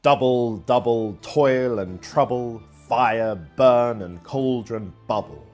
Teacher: Another kind of foot is the 2-syllable long trochee, a stressed syllable followed by an unstressed one.